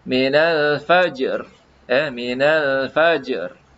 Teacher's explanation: R tu mesti ada getaran ra itu.